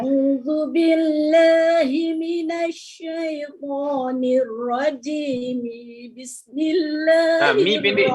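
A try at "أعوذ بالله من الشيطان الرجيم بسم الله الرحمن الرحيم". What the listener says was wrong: Mi pendek. Mi-nya pendek. Rajimi bis. Kira semua huruf Ain je boleh diperbaiki dari sudut jangan masuk ke pangkal hidung.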